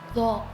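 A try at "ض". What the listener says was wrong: Iya, tapi masih sedikit monyong sedikit.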